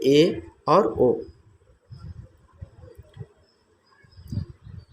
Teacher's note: जिन स्वर के उच्चारण मुख विवर आधा बंद रहता है उसको हम अर्ध संवृत्त स्वर कहते हैं।